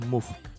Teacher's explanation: ini dibacanya sama persis seperti huruf U di Indonesia dan panjang harokatnya 2-4 harokat. Contoh bunyi Indonesianya seperti bunyi pada kata suku dalam contoh move.